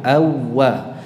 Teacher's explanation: Jadi wawu yang pertama tidak perlu diucapkan. Jadi langsung ke wawu yang kedua dalam pelafalannya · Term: idgham mithlain